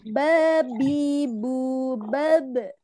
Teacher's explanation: Ba punya sifat yang khas yaitu memantul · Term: qalqalah